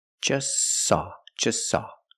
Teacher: the t is between consonants so don't pronounce it it's silent just saw you link the S with the S link them · is between consonants so don't pronounce it it's silent just saw you link the S with the S link them together